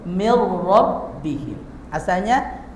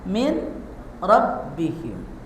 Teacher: Awas apabila ada nun mati atau tanwin bertemu dengan salah satu huruf idgam bila gunah yang dua yaitu lam atau ro maka bacanya masukkan nun mati atau tanwinnya. Lihat, tapi jangan disertai oleh dengung.